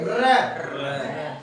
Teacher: लुंटी की आपका कंपित, जैसे आप बोलिए र, क्या र बोलते हो तो आपकी जीभ कंपन कर रही है